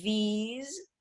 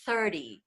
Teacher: there's the vocalized th and there's the non vocalize th which is the breathy one · buzzing sound that's the V's that's the vocalize th and then there's a non vocalize th which is just sort of a breath